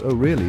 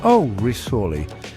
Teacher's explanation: with a flat, slightly falling intonation, maybe even a bit drawn out